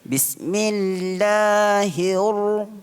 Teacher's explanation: ra itu ditebalkan sebab ra itu berbaris atas. Jadi masa kita sebut hir, mulut kita kembung. Bismillahir, kembung.